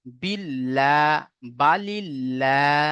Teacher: যদি বা জের থাকে তাহলে আল্লাহ শব্দের লামকে বারিক করে পড়তে হবে, অর্থাৎ লা, লা করে পড়তে হবে।